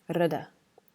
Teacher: a single R is more like saying R and D really close to each other. It's like a flipped R, rd.